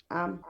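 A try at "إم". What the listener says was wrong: Non, si vous dites am, vous avez mis A. Am. Ici, c'est alif, kasra. Oui, et mim soukoun. Am, c'est que vous avez mis A. Am. Am. Lorsque mim porte au soukoun, on le lit comment? Lorsque mim porte au soukoun, on le lit comment? On dit ça on n'arrive pas à lire parce que c'est muet.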